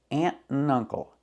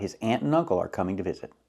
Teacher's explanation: and gets reduced to n